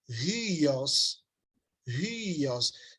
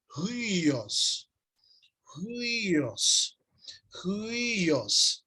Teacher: Você começa a pronunciar com som de U e já vai para o I, pronuncia o I de novo e vai para o os.